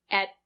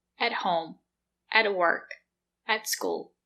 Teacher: We don't say at, we say at. The letter T is a stop T. Put your tongue up and stop the air.